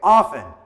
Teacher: I say often with the silent T, but you can pronounce the T if you want as well.